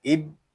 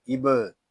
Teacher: यहाँ बा जो है ये हरूफ़ कलकला में से है, इसको कलकले के साथ अदा करेंगे। इसको इब इस तरह नहीं पढ़ेंगे, इसको पढ़ेंगे इब।